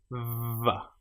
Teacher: The letter or the sound VV is created with your top teeth on your bottom lip